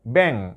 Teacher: ব্যাং বললে সরাসরি নাকে যে লাগে, তাহলে ওটা নাসিক্য বর্ণ। যেসব বর্ণ নাক থেকে উচ্চারণ হয় তাদেরকে নাসিক্য বর্ণ বলে।